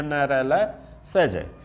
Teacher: दंत और मसूड़ा से बोले जाने वाले वर्ण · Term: वर्षज